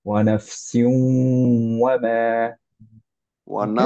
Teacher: সিউটা কিন্তু একটু ধরে রাখবো, 2 কাউন্ট